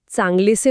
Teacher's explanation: इथे ए कायम राहिला आणि अ लोप पावला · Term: पूर्वरूप संधी